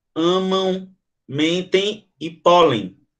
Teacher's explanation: o M e o N fazem que os sons sejam nasais